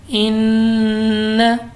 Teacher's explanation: नून मुशद्दद है गुन्ना करके पढ़ा है इन, चूँकि नून मुशद्दद है और उसके बाद अलिफ से पहले ज़बर आ गई है तो हमने इसको खींचा है।